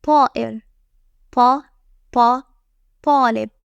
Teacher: It creates a strong, explosive sound. It has an emphatic quality, giving it more force and depth sound than regular ta. Just imagine trying to sound extra serious while saying it.